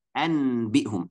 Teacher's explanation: ini nun mati ketemu sama huruf ba yang pertama kita akan tukarkan atau ganti atau merubahkan nunnya biar jadi mim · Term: tukarkan huruf nun dengan huruf mim